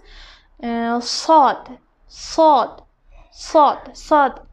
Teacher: mufahham harflardan, ya'ni yo'g'on harflardan qalin talaffuz qilinadi